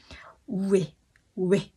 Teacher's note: Rồi có chữ E. Đọc kéo từ U sang E. U sang E nó cũng thành quê thôi mọi người.